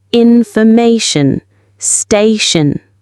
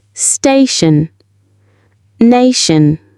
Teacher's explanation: The stress in these words is almost always on the syllable before the t io n ending. This gives the words a very reliable and consistent rhythm.